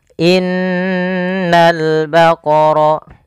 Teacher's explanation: Pada alif lam di sini, lamnya ditampakkan dengan jelas. Ini bukan innaul baqara tapi langsung ke lam. · Yaitu pada lafal ini suara nunnya ditahan, dan nun ketika dia berharakat tasydid kita hukumi dengan bacaan namanya gunnah. Cara membacanya, menahan dulu suara n-nya sepanjang 2 harakat baru dilepas. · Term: alif lam qamariyah